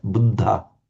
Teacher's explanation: it was a dental D doubled and with the little puff of breath. Buddha. So and it's not a the as in English the, and it's not a the.